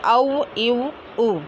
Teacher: वाव दोनों होठों को गोल करने से अदा होता है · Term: वाव गैर मद्दा